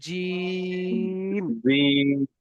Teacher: জিমকে তিন আলিফ পরিমাণ টান দিতে হবে